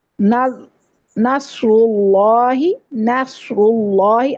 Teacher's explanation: نصر اللہ میں سواد پر ہے، را پر ہے، اللہ کا لام پر ہے، موٹا ہے، نون کو پر نہیں کرنا